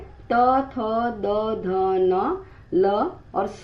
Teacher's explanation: ध्वनि की उत्पत्ति दंत से होती है, उसे दंत्य वर्ण कहते हैं। उसका स्थान क्या है? ऊपरी दांत का पिछला भाग।